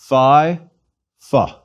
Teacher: most students of ancient Greek pronounce the Phi like the F sound at the beginning of philosophy